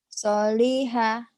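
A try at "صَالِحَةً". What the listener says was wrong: Soknya panjang. Solihan. Ada tanwinnya. Kalau dihentikan, kalau dihentikan soliha. Kalau dihentikan. Karena dibaca apa adanya solihan.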